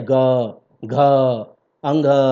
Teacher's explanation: तो देखिए जब आप किसी वर्ण का उच्चारण करते हैं और गला से कंपन एकदम निकलता है, कंपन सा गूंज जैसा होता है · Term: घोष व्यंजन